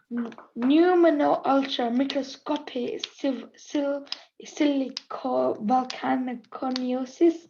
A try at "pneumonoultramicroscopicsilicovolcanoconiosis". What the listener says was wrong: Pneumo, it's a silent P at the beginning there. Pneumonultramicroscopic silicovolcanoconiosis.